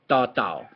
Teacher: the Thai ta tao has tongue movement that goes out a little bit.